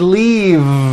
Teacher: It's not leaf with an unvoiced F. I should have said leave with a voiced V sound.